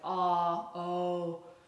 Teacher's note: When my tongue goes back on back vowels like ah, oh, those things that tend to pull, that's the tongue going back